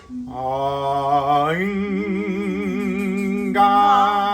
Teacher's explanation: the back of my tongue is closing the gate. And when you open the gate, you get the ga.